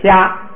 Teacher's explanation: 加上后加字之后，应该读的元音长一点